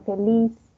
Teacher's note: la s Generalmente no andina se aspira es decir que suena en la laringe esa S como una Ja laringe no entonces en posición final